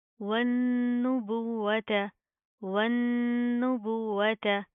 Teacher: वाव के ऊपर शद आ रही है तो इसको हम सख्ती से मजबूती से जमा कर पढ़ेंगे, यहाँ पर हम गुन्ना नहीं करेंगे।